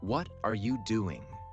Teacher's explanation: A native speaker might say, "What are you doing?" with their voice rising on what and falling on doing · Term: intonation